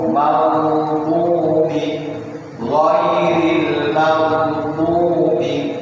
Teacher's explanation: ghain itu punya sifat isti'la, artinya lidah itu naik ke langit-langit dulu, cuma tidak boleh ditahan